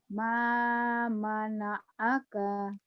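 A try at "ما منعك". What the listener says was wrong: Ma mana'aka. Pendek kayaknya ujungnya ya lagi.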